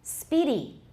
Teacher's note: Speedy, that E has gotten shorter because we have to fit two syllables into about the same time